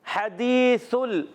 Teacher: जब हमारा जबान का सिरा ऊपर के दांतों के किनारों से लगता है सा अदा होता है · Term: सा की अदायगी